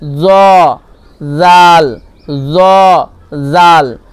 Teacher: যদিও এই দুইয়ের মাখরাজ একই, কিন্তু এর পার্থক্য কি, জ পুর করবেন, জাল বারিক করবেন